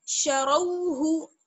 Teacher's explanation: रो को मोटा पढ़ेंगे, बाकी सबको बारीक पढ़ेंगे